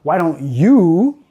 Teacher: él pronuncia el sonido vocal en su forma completa. ¿Por qué? Porque él está enfatizando el you.